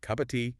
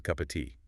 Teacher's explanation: The of almost disappears. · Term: linking